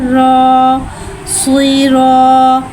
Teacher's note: रॉ पे ज़बर है, ज़बर को मुँह खोल के अदा करके पढ़ेंगे। रॉ पे ज़बर है, लिहाजा यहाँ रॉ को मोटा अदा करके पढ़ेंगे।